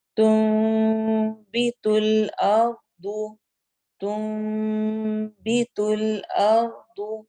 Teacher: تنبت الارض تنبت الارض نون کے اوپر چھوٹا سا میم لکھا ہوا ہے اس وجہ سے یہاں پر ہم نون کی بجائے میم پڑھیں گے